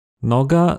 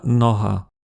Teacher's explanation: L’ancêtre de ces deux langues avait le son [ɡ], mais en slovaque, il s’est systématiquement transformé en [ɦ]